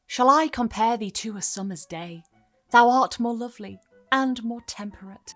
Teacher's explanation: This line, rather than stressed, unstressed, stressed, unstressed; goes unstressed, stressed, unstressed, stressed. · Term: iambic metre